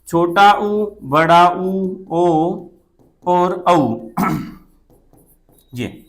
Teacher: आप इनका उच्चारण करके देखेंगे तो आपके होठ गोलाई में आ जाएंगे, वृत्त की आकृति धारण कर लेंगे। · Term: वृत्ताकार स्वर